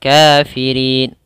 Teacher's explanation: Kafirin ya di sini mad arid disukun. Panjangnya boleh 2, boleh 4 dan boleh 6.